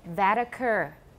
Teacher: you need to link and it's a t between vowels